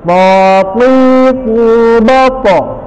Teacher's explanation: menyebutkannya to lepas, terbuka, menjauhnya lidah dari langit-langit mulut. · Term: infitah